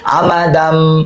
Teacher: দান হওয়ার কথা দাম হবে, কারণ তানবিনের পর বা আসছে এগুলো হবে মিম দ্বারা পরিবর্তন।